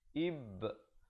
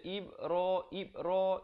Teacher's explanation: Jadi ba itu kita tak buat-buat, dia bunyi sendiri bila kita lepaskan genggaman huruf ba itu. Jadi ib mesti ada. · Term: qalqalah